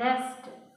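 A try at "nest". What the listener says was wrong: नेस्ट बोलोगे तो आई की मात्रा लगी, पर इसमें हम लोग क्या लगा रहे हैं? एक की मात्रा है, नेस्ट।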